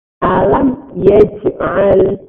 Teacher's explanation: Pada kata alam yaj'al ini ada bacaan tadi namanya izhar syafawi. Izhar syafawi cara membacanya mimnya, mim sukun dibaca jelas karena bertemu selain mim dan ba.